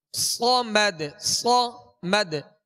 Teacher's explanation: صاد کو سیٹی کی آواز میں سختی سے ادا کریں گے اور پور پڑھیں گے باریک نہیں پڑھیں گے